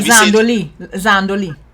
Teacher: the liaison between S at the end of one word and a word that's starting with the vowels has led to us having many words that start with a Z when they didn't really originally start with a Z.